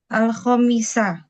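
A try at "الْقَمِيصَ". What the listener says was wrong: Nah, kalau kemeja berarti pakai kof. Al ko. Pakai kof. Ya pakai kof dan sod akhirnya.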